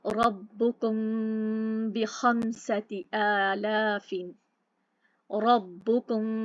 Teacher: इख्फा शफवी, इख्फा ہم کیونکہ ہم اس کی آواز کو چھپا رہے ہیں اور ہلکا سا خفیف سا گنگنا کر رہے ہیں، غنہ ہو رہا ہے اور ہونٹوں کا استعمال ہو رہا ہے